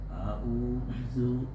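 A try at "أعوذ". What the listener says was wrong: Nah, masih zu. Za. Keluarkan lidahnya. Za. Keluar lagi. Keluar dulu lidahnya, baru dibaca. Za. Zu.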